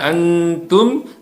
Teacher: nun sukun harus disamarkan ditahan dan mendengung